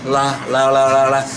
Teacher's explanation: it's mouth slightly open and then the air going from your tongue, both sides of your tongue going out